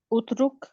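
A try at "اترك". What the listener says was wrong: اترک شاباش,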